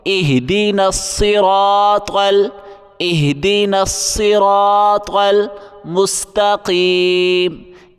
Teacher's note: را کو موٹا کریں گے، طا کو بھی